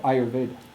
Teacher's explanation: it's not that you're removing that short vowel at the end you're just pronouncing it very very lightly